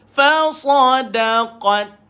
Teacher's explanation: Matikan T dulu baru keluarkan angin.